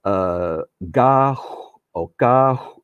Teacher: So the G is more like a voiceless K, like in Mandarin Chinese, the pinyin G is a ga, not ga, ga.